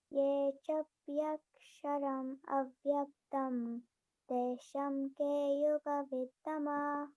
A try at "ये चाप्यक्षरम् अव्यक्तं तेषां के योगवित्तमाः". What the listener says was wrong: Very nice.